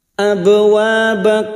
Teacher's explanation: wa fathah bertemu Alif dua harakat Mad thaii